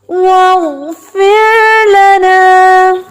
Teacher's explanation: یہ جو فر ہے یہ باریک ہے اور غین موٹا ہے